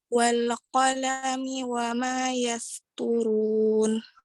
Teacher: huruf sin yang keluar dari ujung lidah bertemu dengan gigi seri bawah dan atas.